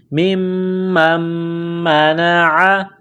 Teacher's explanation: أَظْلَمُ مِمَّن مَنَعَ، میم کو میم کے ساتھ پلس کرنا ہے، میم مشدد ہے، غنہ کریں گے، آواز ناک میں چھپائیں گے · کرنا ہے، میم مشدد ہے تو غنہ کریں گے، مِمَّن مَنَعَ، عین گلے کے درمیان سے زور لگا کر عین کو نکالیں گے